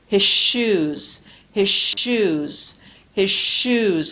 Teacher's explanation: sound in an elongated fashion same thing with his shoes again I get rid of the Z sound and I pronounced the sh longer